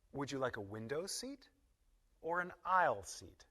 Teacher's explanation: Would you like a window seat and down on the last alternative or an aisle seat? Now listen to the rhythm in this sentence. We put stress on each alternative.